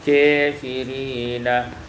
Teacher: imalatu fathatil kaf wal alif, baca imalah fathah kaf dan alif